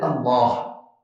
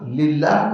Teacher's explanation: کاف ہمیشہ باریک ہوگا، لام ہمیشہ باریک ہوگا، لیکن لام پر کبھی ایسی کیفیت طاری ہوتی ہے کہ وہ باریکی سے موٹائی کی طرف چلا جاتا ہے۔ لفظ اللہ، اللہ کا لام جو ہے وہ مفخم ہوتا ہے اور للہ کا لام جو ہے وہ باریک ہوتا ہے۔ تو للہ کے لام میں مخرج وہی ہے اور اس کی باقی صفات وہی ہیں، ایک ادائیگی میں اس کی ایک تفخیم ہے کہ اس کو منہ کے اندر موٹا کر کے ادا کرنا ہے۔